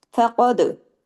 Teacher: दाल पे देखिए कि जज़म है, तो दाल पे कलकला भी होगा। फ़क़द, दाल को कलकला करेंगे, कुतुब जद के लेटर में आता है ना, कुतुब जद, काफ तो बा जीम दाल, ये याद रखिए। · फ़क़द में फा बारीक, दाल भी बारीक, और क़ाफ जो है वो हैवी पढ़ा जाएगा। लेकिन इस पे दाल पे देखिए कि जज़म है, तो दाल पे कलकला भी होगा।